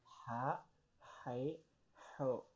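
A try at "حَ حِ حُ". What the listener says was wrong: Hai sama hu-nya udah oke. Ha-nya tinggal. Ha coba.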